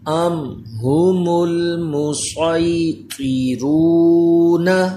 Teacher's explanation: جی میم ساکن کے بعد با اور میم کے علاوہ کوئی حرف ہے، یہاں اظہار شفوی ہوگا. اظہار شفوی کا قاعدہ ہے غنہ نہیں کرنا